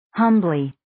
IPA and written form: 'hʌmbli (Humbly)